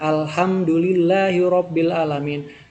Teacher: lillahi disebut dengan lam tipis karena sebelumnya adalah fathah atau kasroh